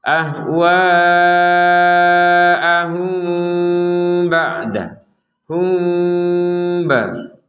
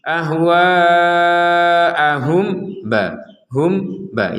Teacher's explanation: Di sini ada mim sukun bertemu dengan ba, maka kita membacanya dengan samar.